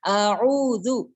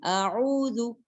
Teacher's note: یعنی زا اس طرح کی بزنگ ساؤنڈ اس پہ نہیں آئے گی